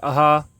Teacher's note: विसर्ग जो है उच्चारण इसका कंठ से होता है।